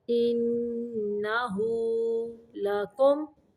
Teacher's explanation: یہاں پہ میم کو صرف ظاہر کرنا ہے، غنہ نہیں کرنا میم پہ